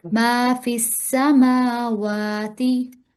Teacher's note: میم پر بھی جی کھڑا زبر ہے، واو پر بھی، تو دونوں کو ایک الف کے برابر ادا کریں گے